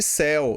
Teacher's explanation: primeiro eu tenho o e que é vogal, e depois eu tenho u que é semivogal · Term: ditongo decrescente